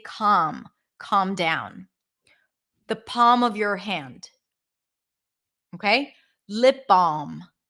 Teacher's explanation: when you have LM at the end you also don't have to pronounce the L actually most people don't pronounce the L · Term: drop the L